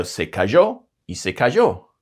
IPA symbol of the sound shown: ʒ